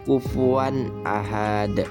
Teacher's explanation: Jadi cara membaca izhar ini adalah jelas ya teman-teman, tanpa dengung.